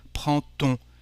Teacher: cuando se trata de conexión, la D se pronuncia como una T en francés